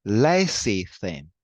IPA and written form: ˈlesɪθɪn (lecithin)